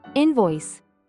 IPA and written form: ˈɪn.vɔɪs (Invoice)